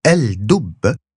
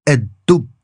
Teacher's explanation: And rather than saying el dub, the bear, you'll say a dub. The lam disappears and the d gets doubled. · In all of these cases, rather than pronouncing two different consonants, for instance a l and then a d, you are going to simplify and skip over that lam and then you make that next consonant extra long